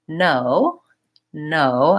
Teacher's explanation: my tongue goes behind my teeth and touches up for the N sound hmm no and when I use an N my whole tongue